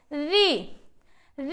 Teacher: री हमारा क्या है, ये हमारा मूर्धा से बोला जाता है। मतलब इसे आपको ये नहीं करना है आ ई।